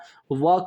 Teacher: दोस्तों, अ का जो उच्चारण स्थान होगा व का, जब व बोलिएगा तो व आपका दंतोष्ठ आएगा, यानी दांत और ओठ दोनों से